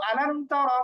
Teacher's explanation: জবর আলাম মিম জবর লাম মিম সাকিন কিন্তু তারপর হচ্ছে তা যেহেতু বাও না মিমও না সুতরাং আলাম এরকম গুন্না করা যাবে না এখানে স্পষ্ট পড়ব